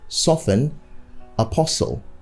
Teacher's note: the t's in this word are all silent so you keep them silent